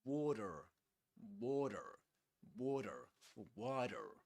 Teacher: A flap T. In water, we say this is a flap T, which means that it's pronounced just similar to a D sound.